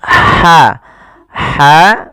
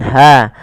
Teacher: kecil jangan dibaca dengan ha besar jangan Harsa tapi dia Harsa huruf ha yang kecil itu dikeluarkan dari tenggorokan tengah tengah tenggorokan